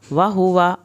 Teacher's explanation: वहुवा वाव की ज़बर लंबी नहीं करनी